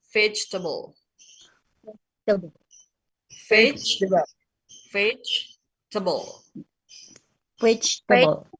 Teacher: Jadi sebetulnya hanya tiga suku kata nggih, bukan empat.